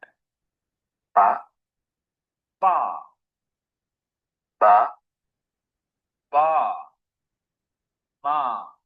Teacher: the labials form with the lips make a slight plosive sound